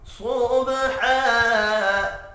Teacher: فالمغیرات صبحا، صاد پر پڑھا جائے گا، با ساکن پر قلقلہ کریں گے